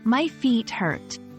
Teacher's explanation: hurt is pronounced with a clear R sound